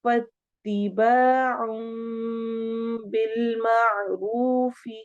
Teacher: فاتباع بالمعروف، فاتباع الف مدہ، औं, यहाँ पे इकलाब हो रहा है, तनवीन के बाद बा आ रहा है, तो हम इसमें नून की आवाज को मीम से बदल देते हैं, इसीलिए छोटा सा हमें मीम लिखा नजर आ रहा है।